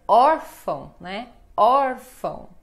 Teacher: Então, o mais forte é or.